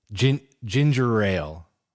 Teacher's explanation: I think it's one of those things that rolls off the tongue because the R sound kind of slips into the ale sound very easily